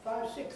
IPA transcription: ˈfaɪv ˈsɪkθ